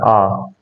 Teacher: जब हम आ बोलते हैं तो पूरा मुंह खुलता है